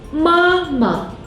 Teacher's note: The second syllable is a neutral tone.